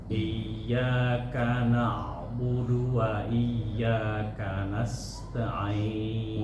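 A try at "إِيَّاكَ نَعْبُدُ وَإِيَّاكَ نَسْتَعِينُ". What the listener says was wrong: Wa iya lebih ditekan. Iya, i-nya.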